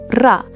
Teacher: In Arabic, the R is a tap. Your tongue touches. Quick. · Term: Arabic R